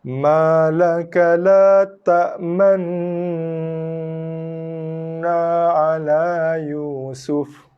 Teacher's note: Lidah sentuh langit dulu, dengungkan sikit kejap, baru moncong, bibir balik asal, baru lepaskan bunyi na.